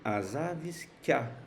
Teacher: A gente fala quase como se fosse um ditongo, né? A gente não fala como se fossem 2 sílabas separadas